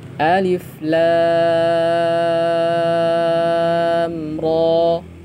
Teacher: Kemudian ro-nya tergolong 2 harokat ya, maka alif tidak panjang sama sekali, lamnya 6 harokat, ro-nya 2 harokat ya.